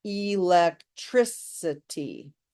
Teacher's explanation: electricity has five syllables and we emphasize the third